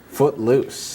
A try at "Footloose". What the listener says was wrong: You took a pause. You were like, footloose.